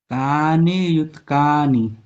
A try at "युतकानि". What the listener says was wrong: युतकानि नहीं, युतकानि, ता में भी आ है।